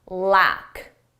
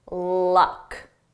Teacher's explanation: with lack, we have a longer sound a more open mouth position and luck. My mouth is closed, because this is more of a schwa sound in my throat